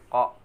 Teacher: pangkal lisan dengan langit-langit atas, keluar darinya huruf Qa.